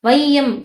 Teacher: ஐகாரம் பாத்தீங்கன்னா சொல்லோட முதல்ல வரும்போது ஒன்றரை மாத்திரை அளவுல வந்து என்னன்னா ஒலிக்குது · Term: ஐகாரக் குறுக்கம்